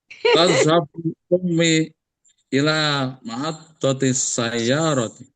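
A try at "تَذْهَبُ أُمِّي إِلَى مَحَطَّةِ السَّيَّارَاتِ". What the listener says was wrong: Iya, ada yang belum mantap itu tasdidnya.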